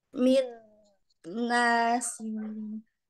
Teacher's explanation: yang Kamil itu sempurnanya masuk ke dalam pangkal rongga hidung